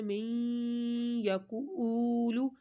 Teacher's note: یہاں پر غنہ ہو رہا ہے کیونکہ نون ساکن کے بعد ادغام کا یا آ رہا ہے ، یہ یا، تو اس وجہ سے ہم نے یہاں پر